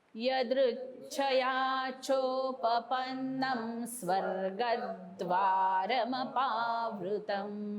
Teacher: स्वर्गद्वार, ग नंतर जीभ वरती लागली पाहिजे दाताला